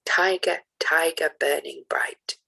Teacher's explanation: Trochaic goes duh, duh. The first syllable is stressed and then unstressed. So one of the most famous examples is Tiger, Tiger by William Blake, which goes tiger, tiger, burning bright.